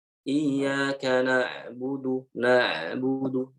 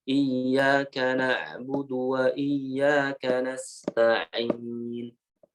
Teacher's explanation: Kalau ain itu dialirkannya bukan nafasnya, melainkan suaranya. Ya, tapi walaupun suaranya itu harusnya sedikit aja mengalirnya, jangan banyak-banyak. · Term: huruf ain